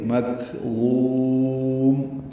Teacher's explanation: ضا کو لمبا کریں گے، میم ساکن پہ ہونٹ بند کر لیں گے. مکظوم، میم پہ اظہار ہوگا.